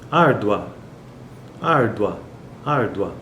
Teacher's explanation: esse a ele é muito mais forte do que o u por isso que ele é uma vogal e está no pico da sílaba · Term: ditongo crescente